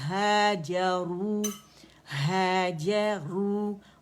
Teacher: را موٹی مخفف میں ضمہ کے ساتھ ہے، وا مدہ ہے